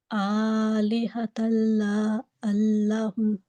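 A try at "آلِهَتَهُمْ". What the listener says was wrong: That's much better. Also, make sure you don't break in between the words, okay?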